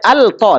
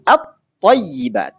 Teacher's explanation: Lamnya sudah idgham, melebur ke to.